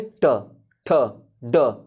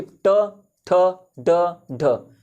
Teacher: अब जैसे ट बोलेंगे, ये जो आपका तालु रहता है ना, ये जो तालु है आपका ऊपरी मुंह का ऊपरी हिस्सा, आप तालु पे क्या करेंगे, जीभ, ये आपका हो गया, ये जीभ हो गया, तो आप क्या करेंगे, ट, ठ, ड, आप जीभ को मोड़ेंगे और क्या करेंगे, तालु पर ही ऐसे मोड़ के ट, ठ, ड, ढ ऐसे बोलेंगे। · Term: मूर्धा